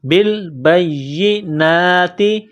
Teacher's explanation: نون کے اوپر کڑا زبر ہے، 1 الف کے لمٹ میں کھینچنا ہے